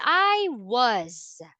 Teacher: The S here sounds like Z